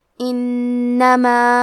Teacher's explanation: نون کے تشدید کو ظاہر کریں گے اور اسے 2 حرف کے برابر پڑھیں گے. آخری میں الف پہ مد کا علامہ ہے.